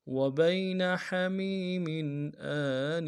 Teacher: وبین حمیم ہا کو گہرائی سے ادا کرنا ہے۔ میم کو یا کے ساتھ لائیں گے، یا مدہ ایک الف دال میں کھینچیں گے۔ نون کے نیچے تنوین ہے، یہاں پہ اظہار ہوگا۔